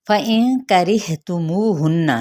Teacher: را کی زیر کو ہا کے ساتھ ملائیں گے اقصی حلق سے ادا کرتے ہوئے، اور یہ را باریک پڑھا جائے گا